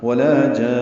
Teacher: نون پہ آواز ناک کے بانسے میں لے جا کر ٹھہراتے ہوئے نون کو ساکن کریں گے · الف مدہ کے بعد نون مشدد ہونے کی وجہ سے مد لازم کلمی مثقل آئی ہے، ہم نے اس میں طول کرنا ہے، لمبا کرنا ہے، 6 حرکات لمبا ہوگا اور نون مشدد پہ غنہ ہوگا۔ آواز روکتے ہوئے ناک کے بانسے میں نون کو ساکن کریں گے · ولا میں واو ہونٹوں کی نا تمام گلائی سے ادا کریں گے۔ لا الف مدہ ہے تو حرکات لمبا کریں گے۔